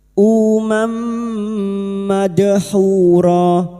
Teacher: Masuk pada huruf berikutnya yaitu huruf mim dan mendengung selama tiga harakat. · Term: Idam bigunah